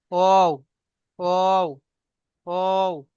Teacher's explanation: দুই ঠোঁট না মিলিয়ে মাঝখান থেকে উচ্চারিত হবে